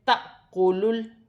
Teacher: پڑھا جائے گا، یہاں بھی الف پر جزم کی حرکت ہے، الف کو حمزہ بھی پڑھا جائے گا اور جھٹکے کے ساتھ بھی پڑھا جائے گا ، جیسے تَأْكُلُ، لام ساکن ہے، لام کو اپنے سے پہلے